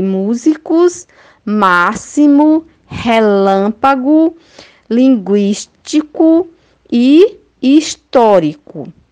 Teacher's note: elas são proparoxítonas porque a sílaba tônica é a antepenúltima